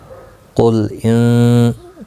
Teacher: قاف مستعلیہ ہے، پر پڑھا جائے گا ، نون ساکن کے بعد حروف اقفا کا تا ہے، اخفا